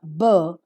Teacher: produced by the letter B requires that the speaker has to bring the two lips together and close the mouth so that the air from the lungs has to stop in the mouth for some time and then suddenly releases the air with the opening of the lips close your lips and just press the air that is coming